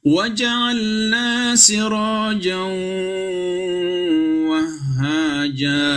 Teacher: sudah tidak ada lagi unsur n-nya, dimasukkan ke dalam waw. dan harus didengungkan, ditahan 2 harokat, dan tidak boleh dia berbunyi ang.